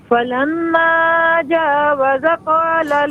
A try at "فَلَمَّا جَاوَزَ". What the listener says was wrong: فلما، یہاں پر آپ نے غلطی کیا کی ہے؟ جاوز، زا کو ذرا کھینچنا تھا۔